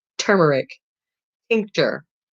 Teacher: the first letter t is a stop disrupts air flow quick sharp staccato